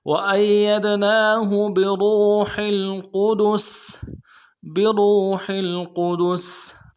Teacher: گے، وَأَيَّدْنَاهُ بِرُوحِ الْقُدُسِ با کو نرم سے ادا کرنا ہے، را کو واو کے ساتھ ملائیں گے، را کو موٹا کریں گے، واو مدہ ایک الف دال میں کھینچیں گے